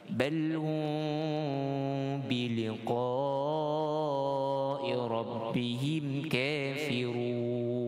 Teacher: Hum kita baca dengan ikhfa syafawi 2 harakat dengungnya. Liqa, biliqa, kita baca dengan 5 harakat.